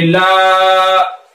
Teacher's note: अलिफ से पहले लाम के ऊपर जबर है, तो अलिफ मद्दा, अलिफ मद्दा को एक अलिफ के बराबर खींच के पढ़ेंगे